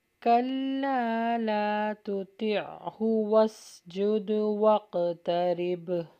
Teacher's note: دال پہ بھی قلقلہ ہوگا، قاف پہ بھی قلقلہ ہوگا اور آخر میں با پہ جب اسٹاپ کریں گے وہاں پہ بھی قلقلہ ہوگا